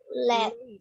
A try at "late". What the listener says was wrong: Oh, bunyinya ada i-nya. Late.